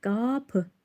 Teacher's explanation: Qapı sözündəki sait qapı qalındır, dodaqlanmayandır. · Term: qalın, dodaqlanmayan